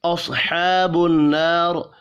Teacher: صاد حروف مستعلیہ ہے، پر پڑھیں گے. ہا کے اوپر کھڑی زبر ہے، 1 الف کے برابر کھینچ کر پڑھنا ہے.